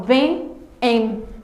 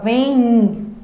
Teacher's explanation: Eu falo vem. Então, tem um I aqui, um som I, né, na minha pronúncia. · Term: encontro vocálico nasal